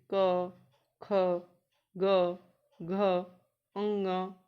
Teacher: अब इनमें क वर्ग जो है वो कंठ से बोला जाता है